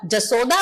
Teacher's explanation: यज्ञ का य बघेली के प्रभाव से ज में बदलते हैं